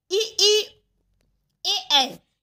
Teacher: हम जीभ के आगे वाले हिस्से से इसका उच्चारण करते हैं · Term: अग्र स्वर